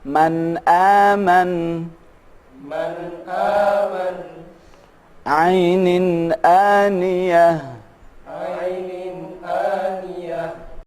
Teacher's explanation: Ketika kita mengucapkan nun mati ataupun tanwin bertemu dengan huruf-huruf izhar, maka nun mati dan tanwin itu harus terdengar jelas atau tanpa gunnah